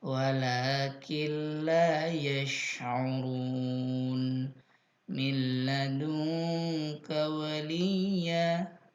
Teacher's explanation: ada tasdid pun sudah orang tahu kalau ini adalah hukumnya amahuna langsung dimasukkan ke huruf kedua tanpa dengung